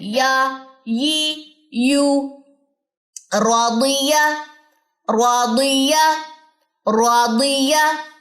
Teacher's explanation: اکثر میں یہ بات کہتی ہوں لیسن سنتے ہوئے کہ آپ کی یا میں ایئر آ رہی ہے، آواز آ رہی ہے، کوئی سانس کی آواز ہے، تو اس مین کہ آپ کی یا درست نہیں ہے. یا میں آپ نے جہر کی صفت لانی ہے